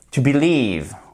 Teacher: Là, vous avez l'accentuation. On entend, mais de manière plus atténuée, la première syllabe et on entend fortement la seconde.